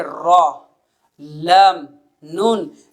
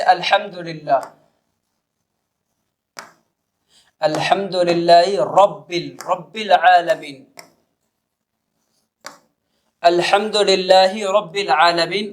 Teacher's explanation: تینوں حروف کی ادائیگی کے وقت زبان کا سرہ، زبان کی نوک اوپر کے سخت والے تالو سے لگ رہی ہے۔ تو ان حروف کا مخرج یہی ہے کہ زبان کا سرہ اوپر کے تالو سے لگے۔